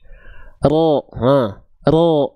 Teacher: Huruf ro itu dilafalkan dari punggung lidah makhrajnya.